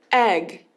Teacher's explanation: a gente tem o som de é é que é uma vogal curta